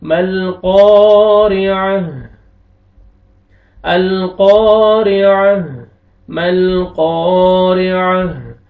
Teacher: आइन को अपने मखरज से अदा करेंगे, ता को हा में चेंज करेंगे, लास्ट में हा का साउंड आना चाहिए।